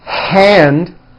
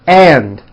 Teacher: would say and like my right and by not putting in that H sound with a loud airstream